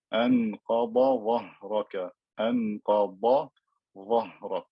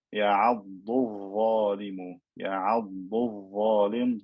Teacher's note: يَعَضُّ الظَّالِمُ, يَعَضُّ الظَّالِمُ, dad and dha are meeting. You have to make the dad clear and distinct from the dha.